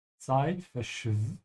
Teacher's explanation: the Z sound in German is like a TS sound. So make sure you emphasize the T here.